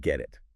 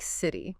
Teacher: >> When a T sound comes between two vowel sounds, it often softens. It sounds less like a sharp t and more like a soft d or even sometimes a quick r sound. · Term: flap T